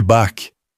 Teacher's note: Há o de Bach, feito lá atrás contra o véu palatino, escuro e raspado, o que o brasileiro já tem no R de carro.